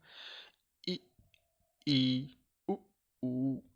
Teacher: जिन स्वरों के उच्चारण में मुख द्वार लगभग बंद रहता है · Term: समृत स्वर